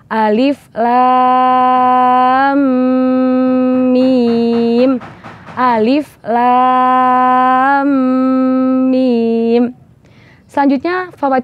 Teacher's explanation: dan mim sukun bertemu mim itu namanya bagian idgham misli sehingga setelah kita menuntaskan huruf lam tidak langsung beralih ke huruf mim tetapi harus didengungkan terlebih dahulu